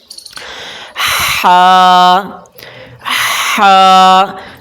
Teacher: اس ہا کو پڑھتے وقت آپ حلق سے آواز نکالیں